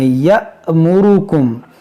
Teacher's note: यहाँ पर देखें जो ये अलिफ आपको दिख रहा है, ये अलिफ नहीं हमज़ा है और हमज़ा साकिना है तो इसको हम झटका देकर पढ़ेंगे यअमुरुकुम, क्योंकि हमज़ा साकिना जब भी आएगा आपको झटका देकर पढ़ना है।